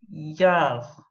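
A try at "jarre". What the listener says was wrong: Alors, faites attention, c'est vraiment un J-J-J, hein. Jar. Jar. En fait, vous avez exactement le même pour le joie et jar. C'est vraiment le J, ok?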